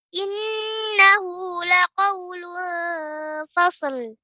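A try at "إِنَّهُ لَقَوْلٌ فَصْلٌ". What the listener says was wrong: Nah, ini jadi jangan terlalu cepat masukkan ke lamnya. Fasl, ini terlalu cepat ya. Jadi pengucapannya fasl. Fasl.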